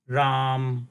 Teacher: so in Hindi the last syllable is pronounced half for example when we pronounce a word Ram in Sanskrit so